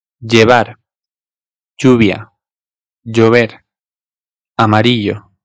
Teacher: bazıları biraz daha böyle C-J karışımı bir şey gibi okuyorlar. Özellikle kelimenin başında bulunursa. · Özellikle kelimenin başında bulunursa. Madrid'de de yine kelimenin ortasındaysa Y'ye yakın, kelimenin başındaysa ise bir tık daha böyle C'ye yakın.